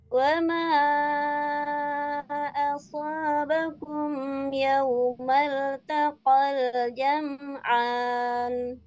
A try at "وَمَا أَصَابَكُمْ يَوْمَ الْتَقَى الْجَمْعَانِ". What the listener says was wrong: Annya kurang sedikit, samakan sama Allah. Sama lah ya. Sama lah ini nih, samakan.